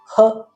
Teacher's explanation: ಹ ಎಂದು ಹೇಳಿದಾಗ ಮಹಾಪ್ರಾಣವು ಉಚ್ಚರಿಸಲ್ಪಡುತ್ತದೆ